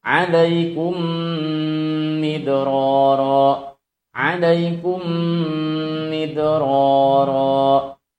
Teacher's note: idgham mimi menempelkan kedua bibir disertai dengan gunnah.